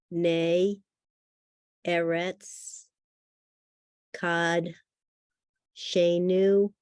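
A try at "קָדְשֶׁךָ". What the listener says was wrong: Now, words that come from the root kadosh have or in it. It's kod. Kod shenu.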